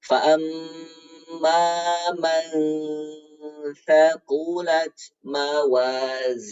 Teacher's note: Maka cara mendengungkannya sudah bersiap-siap ke makhraj huruf sa. Huruf sa ujung lidah bertemu dengan gigi seri atas. Nah, ujung lidahnya sudah menempel di gigi seri atas.